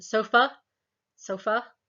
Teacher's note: Make our tongue more in the center for things like as in bird, the schwa sound, as in sofa, sofa.